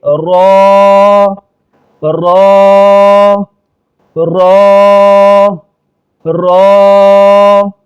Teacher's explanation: اس کو موٹا پڑا جائے گا، ایک الف کے بقدر کھینچیں گے را را را را، اس کو رے نہیں پڑھیں گے، اس کو رے نہیں پڑھیں گے بلکہ را را۔